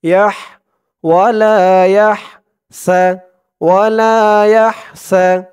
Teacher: হার আওয়াজটা গলার ভিতর থেকে চিকুন হয়ে বের হবে